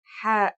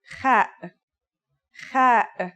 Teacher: According to phonetic charts, Ha is pronounced in a deeper part of the throat than Kha.